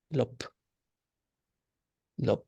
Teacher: So when the ga becomes a suffix, and same with the bha also, bha becomes a little bit like a P sound sometimes too, like lop, lop.